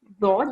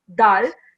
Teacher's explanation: your edge of your tongue should touch your upper molar teeth. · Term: dod sound